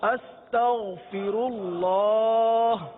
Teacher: تو اب اس میں عموماً جو ہے غین کے بجائے گاف کی ادائیگی کرتے ہیں، استغفر اللہ، استغ نہیں، غین ہے حلق کے اوپر والے حصے سے ادا ہوتا ہے، غین کو پر ادا کرتے ہیں